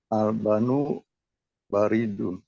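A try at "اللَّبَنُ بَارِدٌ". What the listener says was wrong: Ah, ini coba la-nya tuh jadi ada 2, Pak. Al-labanu.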